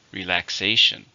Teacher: there are four syllables stress on the third